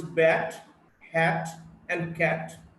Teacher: Then we have the voiceless T, is a voiceless alveolar plosive